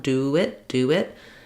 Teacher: As I link between do and it, I have a little bit of a vowel to vowel linking there. So you'll hear that my rounded oo, I naturally glide into a w sound